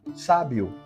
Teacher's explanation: palavra sábio sílaba tônica é o sa sábio por isso que ela vai receber acento gráfico Lembrando que